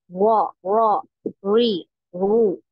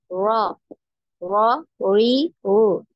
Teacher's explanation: Nah, jadi seperti orang Inggris ya. Seperti pengucapan Inggris ya. Nah, R-nya tidak jelas ya. Getarannya tidak ada.